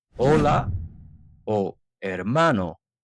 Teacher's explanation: La H es completamente muda, como en hola o hermano nunca se pronuncia.